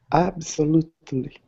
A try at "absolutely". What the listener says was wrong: Yeah, so here with this T, not so much with the T sound. Absolutely.